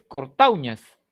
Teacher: la mayor fuerza de voz en este primer caso, en cortauñas, no está en la U, está en la A. Aquí lo que se dice es cortauñas.